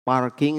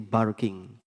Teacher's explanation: orang Arab P itu enggak bisa P itu jadi ba ya jadi misalnya parking itu jadi barking